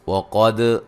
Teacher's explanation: وَقَدْ قاف کو موٹا ادا کریں گے، دال پہ قلقلہ ہے